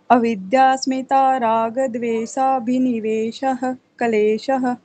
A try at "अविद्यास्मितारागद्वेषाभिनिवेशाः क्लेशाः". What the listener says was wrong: Good good.